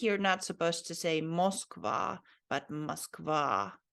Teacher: the emphasis is here on the last vowel